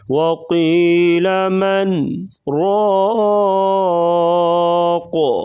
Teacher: وقفاً قاف ساکن ہوگا تو یہاں پر کلکلا کریں گے